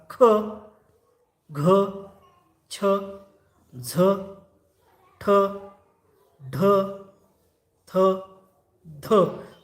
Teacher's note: फुपसातील हवा जेव्हा बाहेर फेकली तेव्हा त्यांना आपण महाप्राण वर्ण असे म्हणतो